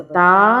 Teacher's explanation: مدہ کا مطلب ہے کھینچ کے پڑھنا۔ تا کے ساتھ یہ الف ہے جس کی وجہ سے ہم اسے ایک الف کے برابر کھینچ کے پڑھیں گے۔